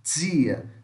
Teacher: para o resto do Brasil, fala dia, como se fosse um D com J.